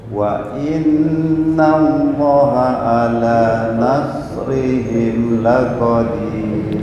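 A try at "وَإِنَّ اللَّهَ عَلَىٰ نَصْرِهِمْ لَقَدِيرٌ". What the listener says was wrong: Udah mendekati tapi masih belum pas. Nasrihim ntar perlu pembenahan makhraj lagi nih. Shad kayaknya shad dha itu agak susah. Loha satu alif.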